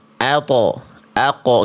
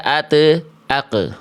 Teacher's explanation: Makanya bunyinya enggak ado, ajo, ado, tapi ab, aj, ad. Adapun huruf th dan qof, itu baru tebal. · Adapun huruf to dan qaf itu baru tebal.